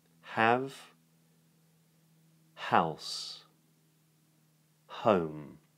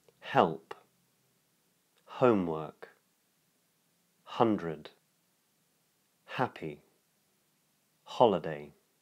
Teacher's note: you make the H sound with the lips relaxed open, the tongue low, and the vocal folds almost touch. And this is a voiceless sound.